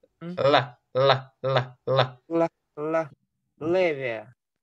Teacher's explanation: вот это л, у них не мягкая, она средняя мягкая, то есть средняя твердая л. То есть у нас на л на зубах.